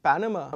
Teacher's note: basically the first syllable is stressed and the second and the third syllables are not stressed.